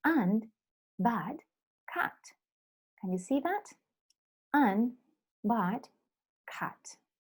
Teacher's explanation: Near open front, unrounded vowel. So this is more to the front, near open front, and it's open. It's near open.